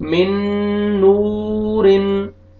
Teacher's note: वाव मत है, वाव से पहले दम्मा है, आपने नून को खींचना है